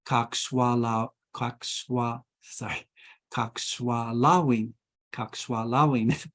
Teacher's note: The accent comes on the penultimate syllable, typically in this language. The penultimate syllable is the second to the last syllable.